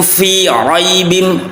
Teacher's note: Wa in kuntum fi raibim, ro ada ro yang dibaca tafkhim, ro yang tebal, ya, ro fathah.